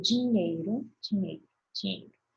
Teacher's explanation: A gente fala como se esse i não tivesse presente, né? Mas na escrita a gente percebe que tá.